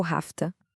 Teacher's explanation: E essa transformação toda acontece em etapas. Primeiro, o som do V em have se transforma num som de F, que é mais fácil de emendar com o que vem depois. Em seguida, a vogal da palavra to meio que relaxa, vira um som mais neutro, quase um o famoso schwa. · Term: contração informal